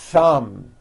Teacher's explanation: You must stretch out the TH sound and hear the air friction.